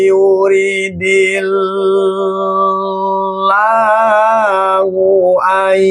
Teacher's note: Jadi, ketika nun ini ee masuk ke dalam huruf ya, maka namanya idgham bigunah. Jadi, nunnya tidak kedengaran. yang kedengaran adalah huruf ya.